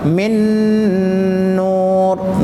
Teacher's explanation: नून साकिन के बाद नून आया, गुन्ना हुआ